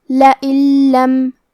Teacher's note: لام حروف الادغام بغیر غنہ میں سے ہے اور ادغام کا معنی ہے حرف کو حرف میں داخل کرنا، تو ہم یہ نون ساکن کو لام میں ملا کے بغیر غنہ سے لیکن تشدید کے ساتھ یہ حکم کو ادا کریں گے